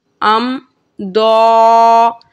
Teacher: حمزہ میم زبر ام، ضاد کھڑا زبر دو، ام دو، یہاں پہ میم ساکن کے بعد ضاد حرف ہے اور اظہار شفوی کا قاعدہ ہے، بغیر گننے کے پڑھیں گے